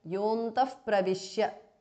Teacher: Yaha antaha yontaha because of sandhi. Visarga changes to upadhmaniya.